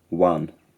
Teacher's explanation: The one vowel is central and low